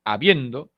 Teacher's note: El acento se encuentra en la segunda posición silábica. Esto es la penúltima sílaba.